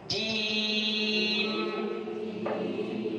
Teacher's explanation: Kemudian terakhir jim juga sama, tidak boleh ada desisa nafas. Jim, ja dari tengah lidah